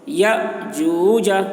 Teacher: अलिफ के ऊपर जज़्म है तो यह अलिफ में झटका लगेगा